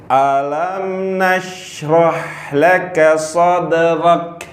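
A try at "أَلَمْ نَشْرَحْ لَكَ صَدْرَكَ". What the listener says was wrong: Kata "shad" seharusnya lebih jelas. Sh shad shad. Oke, ulangi.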